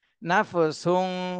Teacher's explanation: দুই পেশু নাফসু এখানে তানবিনের পরে ইকফার হরফ সিন এসেছে এজন্য এই তানভীনে ইকফা গুন্না করতে হবে অনস্বরের মতন